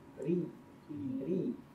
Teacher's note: roh berharakat kasroh. Jadi tidak boleh baca tebal, ya, baca tipis. Ri. Dibantu dengan seperti senyum.